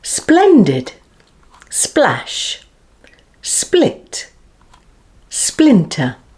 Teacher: the tongue tip and the side of the tongue blade are in firm contact with the ridge obstructing the center of the mouth then the tongue tip is removed from the alveolar ridge quite